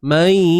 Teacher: Yang pentingnya kekalkan bunyi sampai hidung tu.